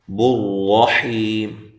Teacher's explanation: را کو موٹا کرنا ہے، حی یا مدہ ہے، اور وقف کی صورت میں مد کر سکتے ہیں۔